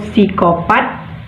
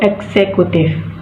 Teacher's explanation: gugus yang konsonan keduanya berupa konsonan desis atau S